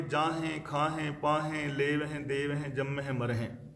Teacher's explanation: ਹੁਣ ਜਦੋਂ ਵੀ ਗੁਰਬਾਣੀ ਦੇ ਅੰਦਰ ਕਿਸੇ ਕਿਰਿਆਵਾਚੀ ਸ਼ਬਦ ਦੇ ਆਖਰੀ ਹਾਹੇ ਨਾਲ ਸਿਹਾਰੀ ਲੱਗੀ ਹੋਵੇ, ਧਿਆਨ ਰੱਖਿਓ, ਜਦੋਂ ਵੀ ਕਿਸੇ ਕਿਰਿਆਵਾਚੀ ਸ਼ਬਦ ਦੇ ਆਖਰੀ ਹਾਹੇ ਨਾਲ ਸਿਹਾਰੀ ਲੱਗੀ ਹੋਏ, ਆਮ ਕਰਕੇ ਉਹ ਬਹੁਵਚਨੀ ਸ਼ਬਦ ਹੁੰਦਾ ਹੈ ਤੇ ਉਸ ਦਾ ਉਚਾਰਨ ਨਾਸਕੀ ਹੋਏਗਾ, ਬਿੰਦੀ ਸਹਿਤ ਹੋਣਾ।